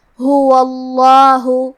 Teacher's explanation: کلمت ہوا کے آخری میں کیونکہ حرف الواو پہ زبر ہے لہذا ہمیں لفظ الجلالہ مطلب کلمت اللہ کے لام کو تفخیم سے مطلب موٹی آواز میں پڑھنا ہے، هو اللہ۔ کلمت لا کے آخری میں مد ہے، یہ مد جائز منفصل ہے تو ہم اپنی آواز 2 سے 4 مد کے برابر لمبی کریں گے۔